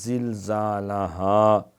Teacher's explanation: اذا زلزلت الارض، اور دو زال پیش، دو زلزالہا، یہ ہا دو آنکھوں والی دو چشمی، یہ پیٹ سے ادا ہوتی ہے